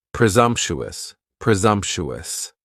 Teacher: presumptuous has four syllables. And the stress is on that second syllable. And the s almost sounds a little more like a z.